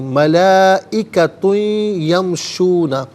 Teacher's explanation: ملائکۃ میں تا پر دو زبر کی تنوین، دو پیش کی تنوین ہے، اسے یمشون کی یا کے ساتھ ملائیں گے، یا کی آواز کو غنّے کے ساتھ ادا کیا جائے گا۔ یہاں پر یرملون کا جو قاعدہ ہے وہ اپلائی ہوگا، ملائکۃ یمشون نہیں، ملائکۃ یمشون۔